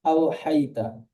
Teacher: অ সাকিনের ডান দিকে যাবার আছে, এটি অলিন, অলিনকে নরম আওয়াজে তাড়াতাড়ি পড়তে হয়।